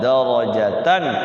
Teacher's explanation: A'zamu darajatan, ra-nya dibaca tebal ya atau tafkhim. Jangan dibaca tipis.